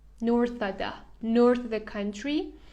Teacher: You don't need to pronounce the V sound in the word of when it is followed by a consonant.